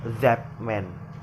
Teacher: the sound T in that is replaced by the sound P because it is similar with the next sound, that is M, which is bilabial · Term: assimilation